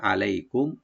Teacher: আলাইকুম আইন রাইট দিবেন, লাই হরফে লিন সফট করে পড়বো, কুম মিম সাকিন এখানে জাহার করবো আমরা, গুন্না হবে না